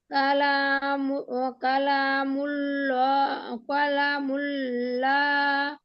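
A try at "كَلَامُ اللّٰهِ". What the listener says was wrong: কালামুল্লাহ কেন পড়লেন আপু? বারিক নাকি এটা? কালামুল্লাহি। সহজে মনে রাখেন আপু, পোর মানে হচ্ছে দুই ঠোঁট গোল করে বলতে হবে। আর বাংলা বর্ণমালা ল বর্ণের মতো, হ্যাঁ, ল ল। আর বারিক হচ্ছে বাংলা বর্ণমালা লা লা, ল আকারে লা, বারিকের ক্ষেত্রে।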